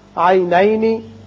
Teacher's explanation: میم پر اظہار شفوی، جیم کی صفت قلقلہ